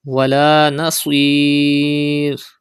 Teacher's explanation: Pronounce sod with thicker voice because it is a mustaliya letter, and stretch madde ariz at the end of this word.